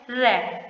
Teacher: तो देखिए दोस्तों, प्रकंपित व्यंजन हम इसे क्यों कहते हैं, क्योंकि जब हम र का उच्चारण करते हैं तो हमारी जीभ एकदम से क्या हो जाती है, कप कपा जाती है, इसलिए हम इसे प्रकंपित व्यंजन के कहते हैं। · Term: लुंठित व्यंजन